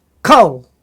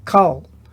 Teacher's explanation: it is a short O when it is in an unaccented syllable